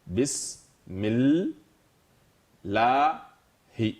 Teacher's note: on va sauter le alif de liaison et le lam du al aussi. Donc du mi, on va directement à la lettre qui suit le al.